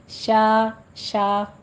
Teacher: शीन खड़ी ज़बर शा बारीक रखना है